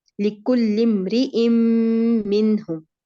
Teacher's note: یہاں اب آپ نے را کی حرکت کو بڑھا دیا تھا. را کا کسرہ 1 کاؤنٹ ہے